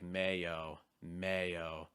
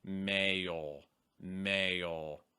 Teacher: on mayo the back of my tongue is actually down more towards the end of the sound also your lips can be a little bit rounder it's like mayo mayo versus mail mail for instance what you